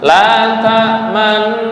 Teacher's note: Full ke hidung, Masuk ke hidung khaisyum karena gunnah. Okay. Terus bibir seolah-olah membaca dhammah.